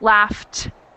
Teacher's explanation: the ED sound doesn't make a syllable so it's laughed sounds like a tea I've got one more